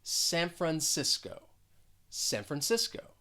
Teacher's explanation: the first syllable has the schwa and that c is gonna sound well more like an s and that second syllable is stressed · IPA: ˌsæn frənˈsɪs koʊ